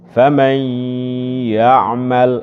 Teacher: Famai, tetap ada khayshumnya, tetapi nakis dia. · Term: idgham nakis bi gunnah